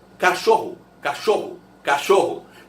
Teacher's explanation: Beleza? Agora, esse O final tem som de U